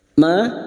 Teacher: Ma fathah diikuti Alif dua harakat kita panjangkan